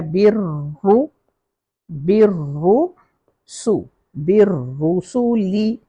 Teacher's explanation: بالرسول، بر با نے را سے ملنا ہے، را کو تشدید ہے، اور را کو جب زبر آئے یا پیش آئے تو را ہیوی ہو جاتا ہے.